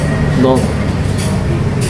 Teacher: Ada majhur, bersuara. Ada mufakhaffam, tebal. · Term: huruf dot